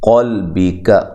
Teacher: قاف کو موٹا، لام کو ہلانا نہیں ہے، کاف کو باریک پڑھنا ہے